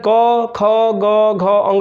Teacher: अर्थात कवर्ग का उच्चारण स्थान कंठ होता है